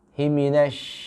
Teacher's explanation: Ini huruf shin dia mempunyai sifat, ya, namanya at-tafashi, ya. Hembusan angin yang begitu kuat, ya.